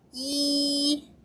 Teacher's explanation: flat tone, your highest pitch in your vocal range.